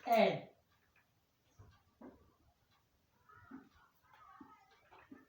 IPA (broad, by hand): e